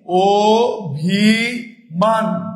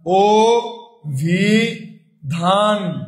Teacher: যখন স্বরে ও এর মত উচ্চারণ হবে তখন সংবৃত